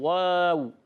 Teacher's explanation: वाव का मखरज है दोनों होठों के गोलाई से। वाऊ अदा होता है हमेशा दोनों होठों की गोलाई से। जब कभी वाऊ अदा करेंगे दोनों होठों को गोल करके व और वाव ज़बर व और वाऊ पर ज़बर की हरकत है।